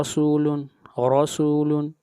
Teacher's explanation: یہاں پر را کے اوپر فتحہ آ رہی ہے، را مفتوح ہے اس لیے را کو موٹا پڑھا جائے گا